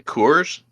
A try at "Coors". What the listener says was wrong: and I feel like you're saying like Coors. Coors. You definitely have a W in yours. Coors.